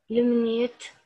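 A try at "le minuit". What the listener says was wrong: لومينوي. لا التي سايلنت التي سايلنت واليو اي بنطقها وي يبقى لومينوي لومينوي.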